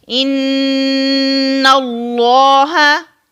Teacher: जब हम नून को अदा करते हैं अब आवाज यहां से निकालते हैं यानी नाक के बांसे से निकालते हैं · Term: गुन्ना